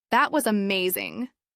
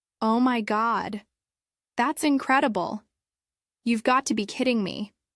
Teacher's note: Rise fall for emotions or emphasis.